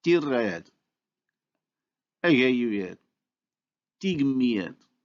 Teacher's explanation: the native speaker proceeds to the insertion of a glide to separate the two vowels